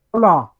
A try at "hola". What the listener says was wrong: You don't pronounce the H.